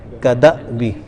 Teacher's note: اس الف نہیں ہے، حمزہ ہے، تو اس کو تھوڑا جھٹکے سے پڑھتے ہیں. کدأبی، اس کو کدا بھی نہیں پڑھیں گے، کدا بھی نہیں، کدأبی.